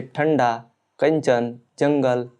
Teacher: अनुस्वार के उच्चारण में वायु नाक से निकलती है और उच्चारण झटके के साथ होता है